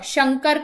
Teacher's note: य, श, अब ये देखिए तालव्य श, ये श, शंकर का जो श है वो तालु से बोला जाता है तो उसे हम तालव्य श बोलते हैं